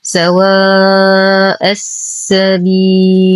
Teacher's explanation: ألف ساكنة ما قبلها مفتوح فهو حرف مد بعدها همز في نفس الكلمة فالمد واجب متصل يمد بمقدار 4 إلى 5 حركات · ننتقل من فتحة الهمزة إلى تشديد السين المشددة. اللام مدغمة في السين وهمزة الوصل تسقط في درج الكلام. وعند الوقف نقف على اللام بسكون عارض قبله حرف مد فالمد عارض للسكون يمد بمقدار 2 4 6 حركات وقفا وطبيعي وصلا.